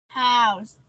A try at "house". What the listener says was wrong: Đúng rồi.